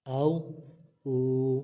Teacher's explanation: یہ واو ساکن سے پہلے پیش آئی ہے تو اس کو ہم لمبا کر کے پڑھیں گے، یہ حروف مدہ ہے، آؤ، او۔